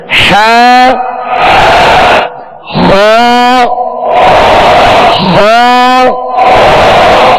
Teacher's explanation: ہا وسط حلق سے درمیانے حلق سے